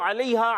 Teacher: عین کی ادائیگی حلق کے درمیان والے حصے سے